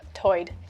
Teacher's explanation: lumbee english speakers share vowel sounds present in the outer banks accent where tide is pronounced toyed